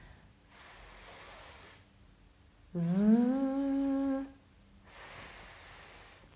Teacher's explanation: when we pronounce s, there is no vibration here. It means that our vocal cords don't work. That's why s is voiceless.